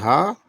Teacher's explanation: यह निरनासिक सघोष व्यंजन है। यह महाप्राण तथा उष्म व्यंजन है। यह कंठ व्यंजन है।